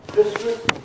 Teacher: nobody says the T in Christmas